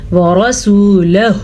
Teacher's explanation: را کو بھی پر پڑھیں گے کیونکہ را پہ زبر ہے۔